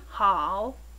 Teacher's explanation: notice how you must lower the pitch before raising it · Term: falling and Rising tone